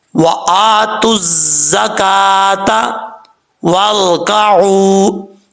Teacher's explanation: last پہ ہا کی آواز آئے گی کیونکہ تا کو ہا سے بدل دیں گے